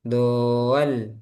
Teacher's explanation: ketika mad yang terakhir mau ke lam itu ada hentakan di mad yang terakhir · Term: nabar